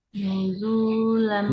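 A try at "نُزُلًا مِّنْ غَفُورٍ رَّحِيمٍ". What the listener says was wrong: Nuzu. Nuzu bukan nuzula. Lam nuzulam min ghafurir rahim.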